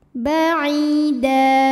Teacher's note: Ai mad tabi'i zahiri karena ada ya sukun didahului kasrah. Maka huruf ain panjang 2 harokat. Ba'ida. Da mad iwad karena ada baris tanwin fathah yang diwaqafkan.